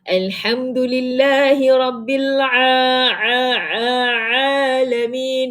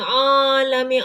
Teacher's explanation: Sebenarnya huruf ain tak ada kena-mengena dengan hidung. So kalau orang sesama baca ain takkan ada masalah sebab dia tidak ada dekat hidung.